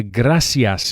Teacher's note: in most Latin American countries, the soft C is pronounced as an S